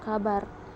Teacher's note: ke-17 ada fonem k memiliki tiga macam realisasi yang pertama yaitu direalisasikan sebagai bunyi k terbuka apabila berposisi sebagai onset pada sebuah silabel